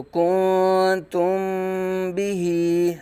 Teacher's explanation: اخفاء شفوی ہوگا. یعنی میم ساکن کو با میں چھپا کے پڑھیں گے. کیسے پڑھیں گے؟ اخفاء کر کے غنہ کریں گے.